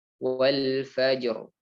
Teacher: ro sukun yang dibaca tebal, maka tidak perlu dibulatkan bibirnya, karena cara menebalkan suara yang benar, sebagaimana yang telah kita singgung, yaitu dengan mengangkat pangkal lidah. Wal fajr. Kita angkat pangkal lidah.